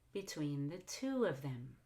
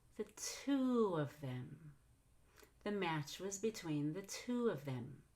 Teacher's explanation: I have the highest pitch on the word to and also the most volume.